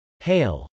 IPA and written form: hˈeɪl (hail)